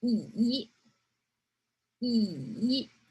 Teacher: It's a small falling down and long going up. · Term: third tone